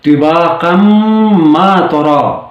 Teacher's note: ایک اور مثال اسی سورہ سے ہی، طباقا ما ترى، طباقا ما ترى یعنی یہاں پر بھی میم کو مشدد بنانا ہوگا اور پھر وصل کرنا ہوگا